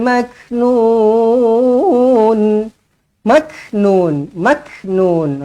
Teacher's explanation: Kaf di sini dihamaskan dianginkan